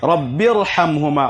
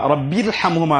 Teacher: নিয়ম হলো যে র সাকিনের পূর্বে যদি হামজাতুল ওয়াসল থাকে তাহলে সেই র পূর্ণ পড়তে হবে পুর পড়তে হবে পাতলা করা যাবে না